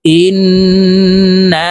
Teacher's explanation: নুন আলিফ জবর না, জবরের বাম পাশে খালি আলিফ মদের হরফ, এই মদকে মধ্যে তবাই বলা হয়, তো এই নুনকে এক আলিফ টেনে পড়ব।